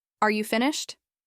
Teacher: With rising intonation, this feels polite and neutral. You're simply asking.